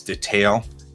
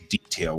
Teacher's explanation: The UK is detail, and that's the emphasis on the second syllable.